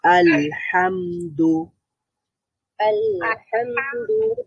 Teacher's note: লাম এর মধ্যেও সাউন্ডটা একটু আংশিক জারি থাকছে মিমের মধ্যেও আংশিক জারি থাকছে